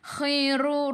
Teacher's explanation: biar ada angin biar menggelegak · Ru baris depan kena baca dengan tebal. Ru 2 harakat ada waw mat asli. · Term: Kha khikhu